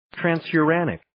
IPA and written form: ,trænsjʊ'rænɪk (Transuranic)